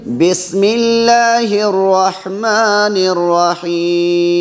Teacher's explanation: بسم اللہ اللہ کا لام باریک ہوگا